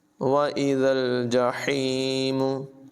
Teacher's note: ज़ाल को लाम से मिलाएंगे, हा की आवाज़ जो है ये हलक से निकलेगी।